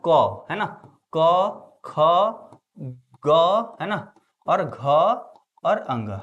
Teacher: तो क वर्ग का उच्चारण स्थान कहां से होता है? कंठ से।